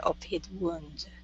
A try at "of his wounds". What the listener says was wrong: So, of his wounds. So give me an S sound there, or it's going to be a voiced S. Okay, of his wounds.